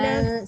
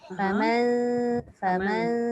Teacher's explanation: senyum sikit masa menyebut nun dengan ta tu. Jangan famau, jangan dengung ke depan. Faman, sebab dia ta tu nipis.